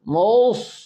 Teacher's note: سین نہیں پڑھنی ہے، صاد پڑھنا ہے، صاد کو موٹا پڑھنا ہے ، زبان کے درمیان اوپر کے تعلق کو لپیٹ لے، جیسے